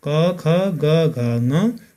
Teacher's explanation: उच्चारण स्थानका आधारमा पहिला कण्ठ्य वर्ण कुन कुन हुने हेरौँ। कोमल तालु र जिब्राको पछिल्लो भागको सहयोगबाट कण्ठ वा घाँटीबाट उच्चारण हुने वर्णहरू